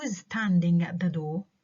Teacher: كلهم falling tone أو falling intonation لأنهم WH questions which are matter of fact, straightforward, direct questions, unemotional, neither polite nor impolite.